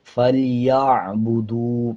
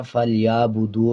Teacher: اسی طرح عین کے اوپر جزم ہے، یا کو عین کے ساتھ ملائیں گے. اکثر لوگ اس کو عین کی جگہ حمزہ پڑھ دیتے ہیں، فَلْيَعْبُدُوا پڑھ دیتے ہیں.